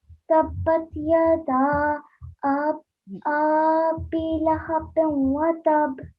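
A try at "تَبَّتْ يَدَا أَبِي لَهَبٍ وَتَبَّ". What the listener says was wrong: No, we have to prolong this alif, not the next one. Only this alif for 3 to 5 seconds at least. At least 3 seconds.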